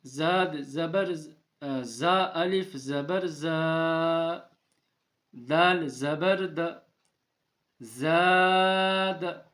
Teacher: یہ الف سے پہلے زبر ہے، یہ الف مدہ ہوگا تو اسے کھینچیں آپ ایک الف کے برابر